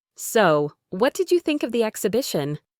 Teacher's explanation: She stressed think to emphasize that she wanted Clara's opinion.